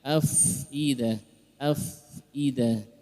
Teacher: Huruf fa, ya, dia punya sifat hamas, keluarkan udaranya